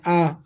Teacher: आ का उच्चारण स्थान होता है आपका कंठ।